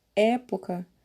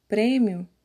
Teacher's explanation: quando nós falamos a palavra época a boca fica um pouco mais aberta e quando falamos a palavra prêmio a boca fica fechada · a palavra prêmio a boca fica fechada então a resposta é na palavra época o som representado pelo e é aberto e em prêmio ele é fechado